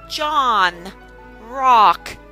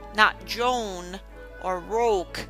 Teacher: Then we have the O short vowel sound, aw, has a little curve on top, and we say John, rock, not Joan or Roke. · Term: short O sound